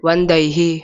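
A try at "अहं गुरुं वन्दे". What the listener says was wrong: वंदई, यहाँ विसर्ग कहाँ है? अहम गुरुम वंदई। समझ गए कि नहीं?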